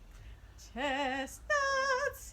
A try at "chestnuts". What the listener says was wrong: No, you did the opposite. You did chest.